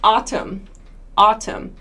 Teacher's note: another a sound we have is this one in autumn autumn autumn has this sort of ah sound ah it's not quite an O sound it's like aw almost ah ah so autumn autumn a common